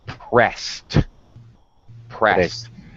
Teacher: because of the voiceless sound at the end of the verb we're going to pronounce eb as a t